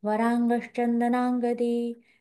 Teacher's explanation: वरांग, किती छान ङ आलाय, तो ङ छान उच्चारा. अनुनासिक आहेत एक प्रकारे.